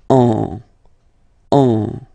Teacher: And then if you combine it with the letter N, in that case, you will get what we call a nasal, so it goes in your nose, and then you get the sound en, en.